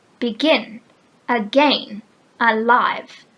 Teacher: one unstressed syllable followed by one stressed syllable